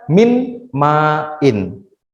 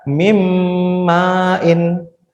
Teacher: Mimmain, nunnya ini hilang adik-adik, masuk ke mim gitu. Jadi nunnya hilang masuk ke mim gitu. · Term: idgham biguna